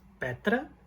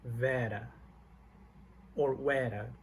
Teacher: So petra is short and it sounds more open, and vera or vera, the vowel is longer and it sounds more close.